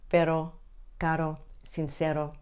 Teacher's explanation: The single R is a quick flick of the tongue on the roof of your mouth. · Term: tapped R